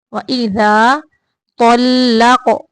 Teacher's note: تو کو موٹا پڑھنا ہے، قاف کو بھی موٹا پڑھنا ہے اور قاف کو قلقلہ بھی کرنا ہے۔